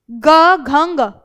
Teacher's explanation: तीसरा, चौथा, पांचवा वर्ण आपका घोष है, क्योंकि क ख के मुकाबले आपको ग घ ग में उच्चारण करने में ज्यादा थोड़ी सी मेहनत करनी पड़ रही है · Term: घोष वर्ण